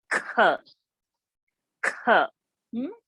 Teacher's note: if we take this as Ka, then this is going to be like Kha, aspiration of it.